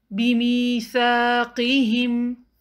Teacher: سا کے لیے زبان کی ٹپ دانتوں سے باہر رکھیے اور قاف کو ہیوی پڑھیے۔